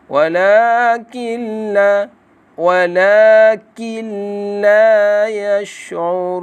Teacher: nun mati bertemu dengan lam. Di sini hendaklah dibaca dengan jelas dan terang tanpa dengun. Hukumnya ialah nun mati bertemu dengan lam, iaitu idgham bila gunnah ataupun idgham bi ghairi gunnah, iaitu tanpa dengun.